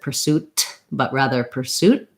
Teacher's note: Americans often use a stop T at the ends of words, so they might not release it